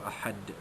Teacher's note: Samad, yang sama macam ahad tadi, kita baca apabila kita wakafkan, kita baca dengan qalqalah kubra, dinyatakan, dilantunkan kuat bunyi huruf dal itu.